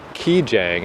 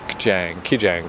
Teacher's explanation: they make kind of a soft k which isn't really something we have but it's not like key Jang it's Jang ke Jang like